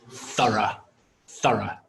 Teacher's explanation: it has two syllables and the stress is on the first syllable